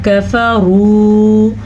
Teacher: را کے اوپر پیش یا زبر کی صورت میں را موٹی پڑی جاتی ہے